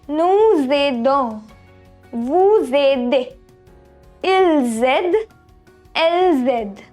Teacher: we have liaison in nous, vous and il, elle form